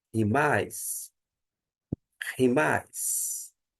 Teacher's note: a aspiração áspera ou espírito forte, ele é soprado